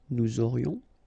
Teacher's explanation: final S not pronounced, and then you've got this liaison